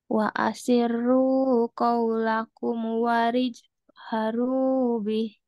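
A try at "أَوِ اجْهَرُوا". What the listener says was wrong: Awij, bukan warij. Awij.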